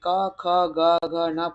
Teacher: ये कंठ को स्पर्श करके निकलते हैं।